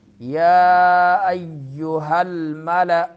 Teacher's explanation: یا میں شد ہے تو اس کو تھوڑا سا زبان منہ میں روکنا ہے، جلدی نہیں چھوڑنا. یا ایہا الملأ، ملأ میں حمزہ ہے، جھٹکا دینا ہے.